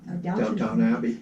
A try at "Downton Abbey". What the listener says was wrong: Downton Abbey. Well, you're wrong, because there's no W, right?